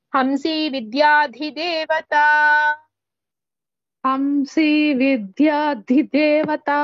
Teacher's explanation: here also ధి only మహాప్రాణ ద remaining టు దాస్ are అల్ప ప్రాణాస్